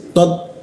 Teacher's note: huruf ta dimatikan itu bocor tipis dia. Tot eusnya dikit ya.